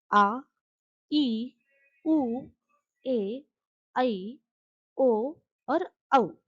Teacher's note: और दूसरा है दीर्घ स्वर। इन्हें बोलने में ह्रस्व स्वर से थोड़ा ज्यादा अर्थात दोगना समय लगता है।